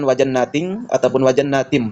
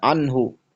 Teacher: Artinya ketika nun sakinah maupun tanwin bertemu dengan huruf izhar halq yakni hamzah ha ain ha gin ko. Maka dibaca jelas dengan bunyi n tanpa dengung samar harus jelas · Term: izhar halqi